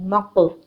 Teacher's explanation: قاف ساکن ہے تو یہاں پر ہم جھٹکا دیں گے، قلقلہ کریں گے بیکاز قاف ہیوی لیٹر بھی ہے اور لیٹر آف قلقلہ بھی ہے